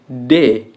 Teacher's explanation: bunyi D yang mendapatkan hambatan pada ujung lidah atau aspek dan gigi atas